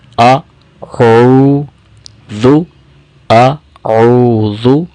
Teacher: حمزہ گلے کے نیچے والے حصے سے ادا ہوتا ہے اور عین گلے کے درمیان والے حصے سے ادا ہوتا ہے۔ اسی طرح ذال کے اندر وصل ساؤنڈ نہیں ہوتی ہے، یعنی سیٹی کی آواز نہیں ہوتی ہے، زو نہیں پڑھیں گے۔